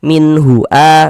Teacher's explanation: Bunyi nun sukunnya kita baca jelas, kita baca min. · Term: izhar halqi